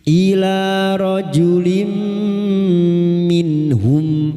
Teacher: masuk dengan mendengung, masuk pada huruf mim dan mendengung selama 3 harokat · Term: idgham bi guna